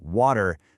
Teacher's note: when a t sound is squished between two vowels in American English, it almost always softens into a quick d sound. So water sounds a lot more like waiter, and better sounds like better. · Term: the flap t